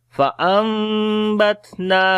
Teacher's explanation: After the noon sakin there is ba, we make iqlab, we convert noon into meme, and we hide the sound of meme into our nose